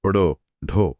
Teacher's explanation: जीभ पहले ऊपर उठकर मूर्धा को छूती है, मुड़ती है और फिर एक जोरदार झटके के साथ नीचे गिरती है। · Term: उत्क्षिप्त